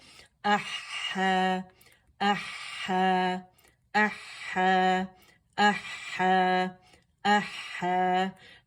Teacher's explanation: अवसतुल हल्क से अदा होगा